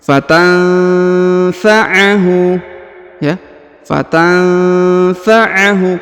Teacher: Perhatikan, nun sukun bertemu dengan fa, yang ini, ya. Nun sukun bertemu dengan fa, maka didengungkan dan disamarkan, ya.